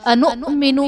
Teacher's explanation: حمزہ ساکنہ ہے، جھٹکا دے کر پڑھیں گے